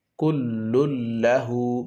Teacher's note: তানবিনের আওয়াজটি পরের হরফ লামের সাথে মিলিয়ে যাবে, ইদগাম হয়ে যাবে। গুন্না ছাড়া ইদগাম করতে হবে। ইদগামে বেলা গুন্নার কায়দা।